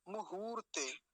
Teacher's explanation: ह का पर जो उकार है उसको लंबा खींचें · मुहूर्ते, मुहूर्ते में देखिए, मकार पर ह्रस्व उकार, हकार पर दीर्घ उकार, तो मुहूर्ते, हकार को थोड़ा, हकार पर जो उकार है उसको लंबा खींचेंगे, मुहूर्ते।